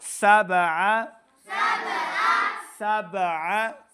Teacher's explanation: با ساکن ہے، قلقلہ سے ہے تو اس کے اوپر قلقلہ ظاہر کریں گے